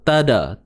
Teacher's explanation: Pada huruf ta ni kita kena tahan suara dulu. Tadat, tahan dulu. Dah tahan baru ada sifat hams.